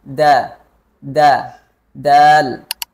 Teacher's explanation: Makharijul huruf dal itu ujung lidah menyentuh pangkal gigi seri atas